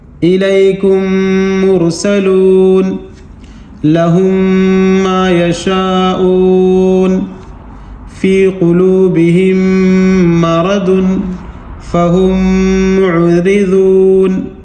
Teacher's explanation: تو میم ساکن کے بعد میم آ گیا ہے تو یہاں ادغام کر کے, یعنی میم کو میم میں ملا کر کے گنہ کر کے پڑھیں گے